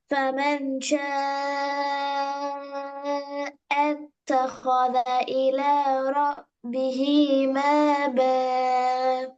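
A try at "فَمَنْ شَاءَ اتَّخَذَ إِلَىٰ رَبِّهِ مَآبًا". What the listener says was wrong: அது ம ப ம ப அது பெரியது. ம ப அப்படி ஆகியது.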